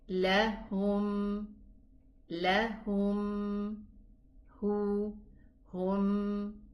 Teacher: It has this sound from the nasal that needs a little bit longer time so that it is heard and the meme sound is properly pronounced. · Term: ghunna